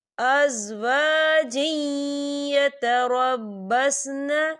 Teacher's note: تو یہاں پر ادغام ہوگا تھوڑا سا غنّے کے ساتھ